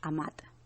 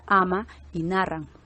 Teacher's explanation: al final de la palabra, la última consonante cae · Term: elisión de consonante